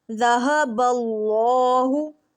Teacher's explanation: آگے دیکھتے ہیں، ذہب اللہ، ذال نرم اور باریک، ہا آ گیا ہے، سینے والا ہا، یہ ہا جو ہے یہ کہاں سے ادا ہوتا ہے، ہا سینے کی طرف والے حصے سے ہا ادا ہوتا ہے